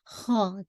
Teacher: खा को हैवी कीजिएगा फिर टू काउंट के साथ